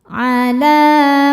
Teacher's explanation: lam berharakat fathah panjang. Cara bacanya panjang dua harakat. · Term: thobi'i muqaddar